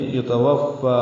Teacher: مَّن يُتَوَفَّى، مئی میں ادغام ناقص ہے، غنہ کریں گے، یتوفا، واو کو فا سے ملائیں گے، فا کو 2 حرکات لمبا کریں گے